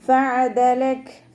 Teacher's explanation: അവസാനത്തിൽ കാഫിന് സുക്കൂന് കൊടുക്കുമ്പോൾ കൽക്കലയുടെ ലെറ്ററില്ലാത്തത് കൊണ്ട് ഹാഫ് സുക്കൂന് കൊടുക്കാൻ ശ്രദ്ധിക്കുക. കുറച്ച് എയർ പാസ് ചെയ്യണ സൗണ്ടിൽ വേണം നിർത്തി കൊടുക്കാൻ